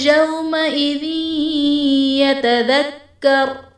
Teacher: یومئذ یتذکر میں واو ساکن سے پہلے حرف پر زبر ہے، واو لین کا قاعدہ ہے اس لیے ہم اسے بغیر کھینچے بغیر جھٹکا دیے نرمی سے معروف پڑھیں گے۔ ذال کے نیچے دو زیر کی تنوین، تنوین کے بعد حروف یرملون میں سے یا ہے تو یہاں پر ادغام مع الغنہ کا قاعدہ ہے، یعنی تنوین میں ہم غنہ کر کے پڑھیں گے